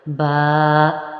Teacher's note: تھوڑا سا اس کو لمبا کر کے ایک الف کے برابر پڑھیں۔ با، اس کا مخرج دونوں ہونٹوں کے تر حصے سے ہی ادا ہوتا ہے، دونوں ہونٹوں کا جو تری والا حصہ ہوتا ہے وہاں سے آپ اس کو ادا کریں گے، با۔